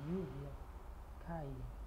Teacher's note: México, Colômbia e Peru. O LL soa como I ou I mais suave.